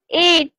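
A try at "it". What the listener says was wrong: হ্যাঁ, ইট হলে তো লম্বা হয়ে যায়, ইট।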